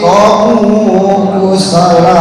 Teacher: Kusala, sa panjang, satu alif.